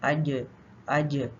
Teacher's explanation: जीम का मखर बंद है और साथ ही इसमें वोकल कॉर्ड्स भी बंद होती है तो जीम में आवाज और सांस दोनों बंद हो जाती हैं · تو جیم کا مخرج بند ہے اور ساتھ ہی اس میں ووکل کارڈز بھی بند ہوتی ہیں، تو جیم میں آواز اور سانس دونوں بند ہو جاتی ہیں، ٹھیک ہے؟ اور اسی لیے اس میں کلکلا ہو جاتا ہے، اج اج۔ · جب آپ مخرج سے زبان ہٹائیں گے، جب آپ مخرج پہ لگائیں گے اج تو مخرج کیونکہ بند ہے آواز نہیں آئے گی، تو جب آپ مخرج سے فوراً لگا کے ساتھ ہی آپ ہٹا لیں گے اج، تو پھر اچھل کے آواز اس کی واپس آئے گی